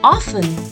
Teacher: the T in this word remains silent